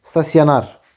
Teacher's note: Vurğu 2-ci, 3-cü hecəyə yox, sonuncu hecəyə düşür.